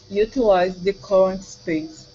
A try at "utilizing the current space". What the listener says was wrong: Pronounce the ing at the end. Utilizing the current space.